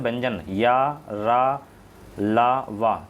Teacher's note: अंतः से व्यंजन या, रा, ला, वा, ये जो हैं घोष होते हैं